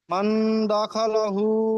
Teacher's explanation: মান বলতে গিয়ে মান আওয়াজকে নাকে তুলতে হবে। মান দা খেলাহু, দা টান হয়ে যাচ্ছে, দখলাহু, খ জাবার খ, মুখ গোল হয় না, খ, মা খ, মা মান দা দখলাহু, মান দা খালাহু, দা টান হয়ে যাচ্ছে, দখলাহু। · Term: ইজরা